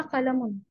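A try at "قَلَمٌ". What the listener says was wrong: अहसनती।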